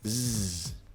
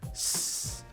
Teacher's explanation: The reason is that the S in he's sounds like a Z, he's, because it's between voice sounds. Voice sounds make your vocal cords vibrate, like zzz, versus unvoiced sounds like s. So it's easier to naturally use a Z sound here.